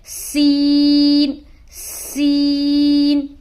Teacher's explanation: سین کو ہم ادا کریں گے تو سیٹی کی سی آواز آئے گی